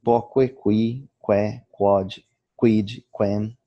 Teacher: O U do grupo QU é sempre pronunciado em latim.